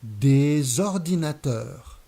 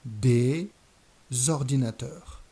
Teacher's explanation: liaison here consists in adding a z sound at the beginning of the noun